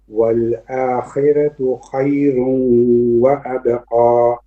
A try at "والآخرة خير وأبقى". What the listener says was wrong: والآخرة خير وأبقى. Okay, the kha becomes heavy again.